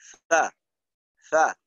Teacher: ফার মাখরাজটা হলো সানায়া উলিয়ার আগা, অর্থাৎ সামনের উপরের দুই দাঁতের আগা এবং নিচের ঠোঁটের পেট। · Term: হামসের হরফ